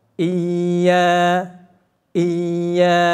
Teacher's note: Kalau ya di tasjid bunyinya itu mengalir saja, memanjang. Iya, iya, begitu masuk ngalir saja.